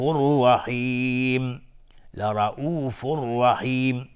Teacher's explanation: تنوین بعدش را ادغام بدون غنه. لرؤوف رحیم و را مفخم هست چون فتحه داره.